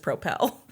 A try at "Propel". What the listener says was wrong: Propel. thought you said propel. Well, you put the emphasis on the wrong syllable.